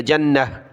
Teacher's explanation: جنہ جنت، جب رکیں گے تو جنہ گولتا وقف میں ہا بن جاتی ہے